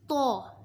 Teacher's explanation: تو زبان کی نوک اور اوپر کے دانتوں کی جڑ سے ادا ہوتا ہے۔